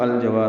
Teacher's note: والف مدہ ہے، 2 حرکات لمبا کرنا ہے، را باریک ہے · حمزہ پر زبر لگا کے لام سے ملا دیں گے، اظہار قمری ہوگا جیم کی وجہ سے